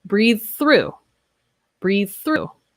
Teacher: here we have the voiced th, breathe, and unvoiced through. So these are very similar sounds.